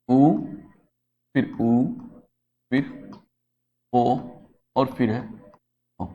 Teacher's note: जिन ध्वनियों का उच्चारण करते समय जो होठ है अर्थात ओष्ठ है वो क्या हो जाते हैं बेटा, गोल हो जाते हैं। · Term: वृत्ताकार स्वर